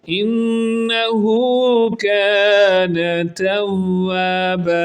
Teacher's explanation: انہ پہ غنہ کریں گے، نون پر شد ہے، غنہ کہتے ہیں آواز کو ناک میں لچا کر پڑھنا۔ ہا الٹا پیش ہو ہے، ایک الف کی مقدار کے برابر اس کو لمبا کر کے پڑھیں گے۔ کانا، الف کی وجہ سے ایک الف کی مقدار کے برابر کا کو بھی لمبا کریں گے، کانا توابا۔